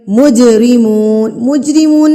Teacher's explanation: جیم ساکن ہے تو ہم یہاں پر اس کو ہلا کے پڑھیں گے، یعنی کہ قلقلہ کر کے پڑھیں گے